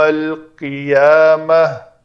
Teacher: تا مربوطہ ہے اور اس کے اوپر وقف کرنا ہے تو اس کو ہائے ساکنہ بنایا میں نے